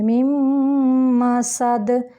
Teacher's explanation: یہاں ہم نون کو نہیں پڑھیں گے، میم کو پڑھیں گے · نون کو نہیں پڑھیں گے، میم کو پڑھیں گے، میم مسد، سین سیٹی کے ساتھ ہوگا اور دال قلقلہ ہوگا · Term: ادغام بالغنہ